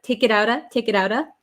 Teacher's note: the T here in it connects with the O sound. So the T is between an I and an O. So it becomes a flap T.